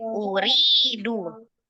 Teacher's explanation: di situ ri-nya yang panjang, du-nya pendek